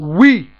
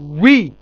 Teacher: দুই ঠোঁটের কাজ, ভেতরের কোনো কাজ নেই, দুই ঠোঁটের কাজ। উই, ই উই, ওয়া মুখ গোল করুন, উই, মুখ গোল করুন, মুখ গোল করুন, তারপরে উই, হ্যাঁ উই উই, উই, উই না, ভেতরের কাজ নেই।